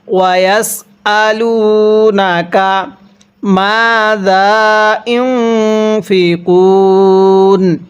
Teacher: ওয়ায়াসআলুনাকা মাযা ইউনফিকুন, এই নুন সাকিনটা আমরা গুন্নাহ করব।